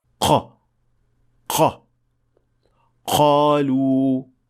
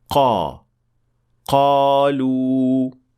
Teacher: غلطی اس طرح سنائی دیتی ہے: ق ق قالوا یہ تب بھی محسوس ہوتا ہے جب آپ کو قاف کی آواز کے ساتھ خا یا غائن کی ہلکی سی جھلک سنائی دے، قالوا جبکہ صحیح ادائیگی کے لیے زبان کو نرم تالو کو چھونا چاہیے تاکہ درست قاف سنائی دے